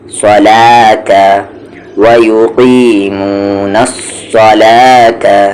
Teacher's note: صاد heavy ہے، لام light ہے